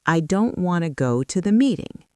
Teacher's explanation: Now let's look at want to. This reduces to wanna.